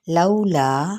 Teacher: वाउलीन और इसे 4 हरकत लंबा करेंगे